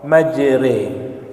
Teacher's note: imalah itu berharakat fathah tetapi bacanya dimiringkan ke kasrah